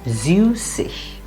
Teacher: Again, the stress is on the süß part.